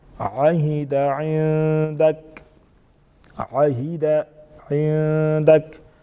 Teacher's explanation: کا اخفا کریں گے، نون ساکن اخفا کریں گے یہاں پر، عندک یعنی آواز کو ناک میں چھپا کے پڑھیں گے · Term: نون ساکن کا اخفا